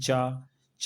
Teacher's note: ये अघोष है लेकिन अल्प प्राण है।